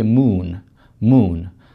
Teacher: То есть вы знаете, в английском языке два звука У. Вообще звук У у нас находится там, сзади. Он высокого подъема, но располагается сзади. Например, в слове moon.